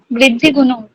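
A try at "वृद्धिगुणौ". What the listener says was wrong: গুণৌ, উচ্চারণটা কি হচ্ছে? বৃদ্ধি গুণৌ, ঔকারটা দীর্ঘ বর্ণ, তাই টাইম নিতে হবে, ঠিক আছে?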